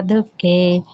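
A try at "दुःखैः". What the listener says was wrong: ಇಲ್ಲಿ ದುಃಖೈಹಿ ಅಂತ ಬರುತ್ತೆ ಮಾತಾಜಿ ವಿಸರ್ಗ. ಮೃತ್ಯು ಜರಾ ದುಃಖೈಹಿ.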